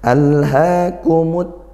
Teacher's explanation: lam sukun di awalnya jangan lupa dialirkan · lam takrifnya dibaca masuk langsung ke huruf Ta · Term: idgham syamsiyahah